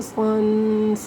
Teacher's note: صاد کو پر کر کے پڑھنا ہے، مطلب اسے سین کے ساتھ مکس نہیں کرنا